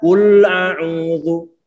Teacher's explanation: Salahnya adalah di saat mengucapkan lam yang disukunkan, bibir kita itu masih dalam posisi monyong. Mestinya sudah kita tarik ke belakang.